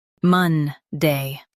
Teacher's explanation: Stress Mon and keep Day clear.